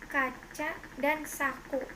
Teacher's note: Konsonan K, kriterianya bunyi dorsovelar hambat tak bersuara, contoh kata kaca dan saku.